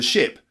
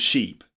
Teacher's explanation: ship is a short sound, I, and sheep is a long sound, E, sheep.